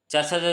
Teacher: चाचा चाचा बोला जाता है कंठ के बाद तालु, तो तालु से